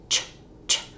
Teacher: So this is not a t plus a sh, except that it kind of is. It's us saying the t and the sh all at once. · And it's the reason it's this symbol, similar to how our diphthongs, where we're making a movement to make this sound. The ch starts with our tongue in the position it is for the t sound, then it drops to the position it is for the sh sound. So this is not a t plus a sh, except that it kind of is. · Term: ch sound, affricate sound